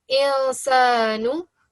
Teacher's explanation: I'm reading it from my nose. I'm giving it a nasal sound.